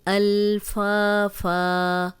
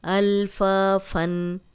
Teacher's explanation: اگر ہم رک گئے ہیں تو فا پڑھیں گے، اور اگر آگے پڑھتے جا رہے ہیں تو فن پڑھیں گے